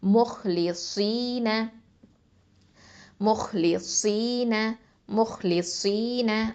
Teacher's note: அப்போது சுவாது வந்து heavy letter, அதனால் முஹ்லிசீன முஹ்லிசீன முஹ்லிசீன. அந்த சுவாது வந்து ஹெவித்தன்மையை நம்ம அங்கே தஃஹீம் தன்மையாக வல்லினத்தன்மையாக கொடுக்கணும்